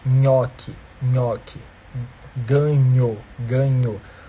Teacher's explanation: quando o dorso da língua encosta no palato duro · O corpinho da língua encosta na parte dura do palato, né? E aí, por isso, você gera uma consoante palatal.